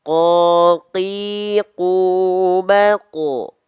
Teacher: huruf qof dia sifatnya jahr dia tidak mengeluarkan perecikan nafas karena apa Karena dia nempelnya antara pangkal lidah dengan langit-langit yang · Kakiku. Tapi kalau huruf qaf dia sifatnya jahar. Dia tidak mengeluarkan percikan nafas.